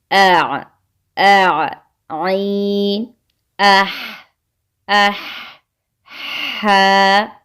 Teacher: Number 2 پہ ہے وسط حلق یعنی درمیانہ حصہ، جہاں گلے کی ہڈی نمایاں ہوتی ہے۔ گلے کے درمیان والے حصے سے بھی 2 حروف ادا ہوتے ہیں، ایک ہے عین اور ایک ہے ہا